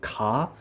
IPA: k